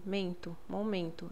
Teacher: Esse N, a função dele é nasalizar o E, certo?